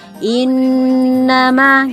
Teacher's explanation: itu tiga ketukan atau satu setengah Alif jadi ditahan dulu sebentar in nama gitu in itu in 3 ketukannya jadi jangan kupu-kupu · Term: Nun tasydid